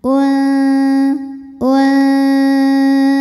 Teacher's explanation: hukum ikhfa ausat karena nun sukun menghadapi huruf Zai maka Nun nunnya ini ee dibunyikan samar-samar ya siap-siap menuju Z disertai bunyi dengungan